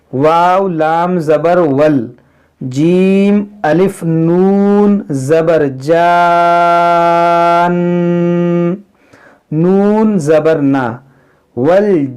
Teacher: نون مشدد ہے، اس میں غنہ بھی کریں گے